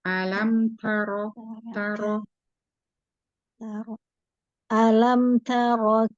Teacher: Huruf ta-nya, huruf ta-nya sedikit lagi dihamaskan.